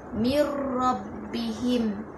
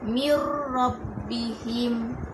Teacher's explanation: Mir rabbihim, nun mati bertemu dengan huruf ra, yang mana ra tu tertarik bacaannya di huruf nun, iaitu mir rabbihim. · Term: idgham bila gunnah